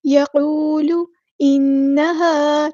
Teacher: نون پہ غنہ زمانی ہو رہا ہے، ایک الف کے برابر رکیں گے، ہاں سمپل ادا کریں گے۔